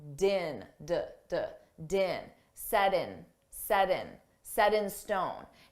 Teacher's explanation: So we can pronounce that T as a soft D, din. So I take that sound and I connect it to the next word in, and it sounds like din, din, set in stone.